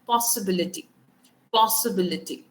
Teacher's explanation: Then the stress is on antepenultimate. Antepenultimate is the third last syllable. यहाँ से शुरू होके third last syllable पे जो आपका stress है वो आएगा।